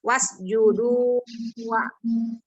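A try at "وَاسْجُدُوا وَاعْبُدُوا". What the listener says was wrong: Wa-nya jangan jadi panjang. Ini wa budu. Coba lagi.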